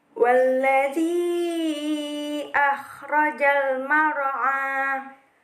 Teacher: Yang ke-11 mar'a itu mad tabi'i karena huruf ain bertemu dengan huruf alif di atasnya, maka dibaca panjang sepanjang 2 harokat juga